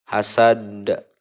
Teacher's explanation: Nah, ini adalah qalqalah kubro namanya. Cara membacanya itu harus memantulkan huruf qalqalah dengan benar-benar jelas, besar dan tebal.